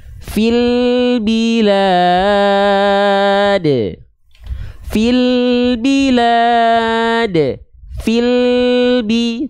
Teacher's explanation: Tidak akan ada bunyi vokal e di sana. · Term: lam sukun